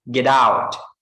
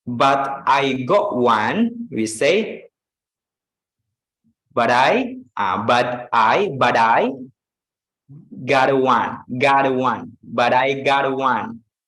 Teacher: T plus vowel sounds like D or R.